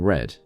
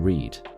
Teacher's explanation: For example, the vowel in red is short, but combined with an A makes a long vowel in read